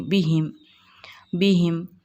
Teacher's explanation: میم ساکن کے بعد با اور میم کے علاوہ کوئی دوسرا حرف ہے تو ہم کو ہم ظاہر کر کے پڑھیں گے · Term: اظہار شفوی